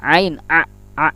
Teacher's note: ain ini ingat jangan sampai ke rongga atau hidung, harus ditenggorokan